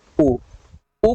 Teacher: वृत्तमुखी जो वृत्त जैसा संरचना बनाएगा ओठ पर